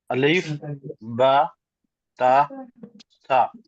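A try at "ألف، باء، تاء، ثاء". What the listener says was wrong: Uh, Here you have to be careful. Don't prolong it. Just quickly. Alif.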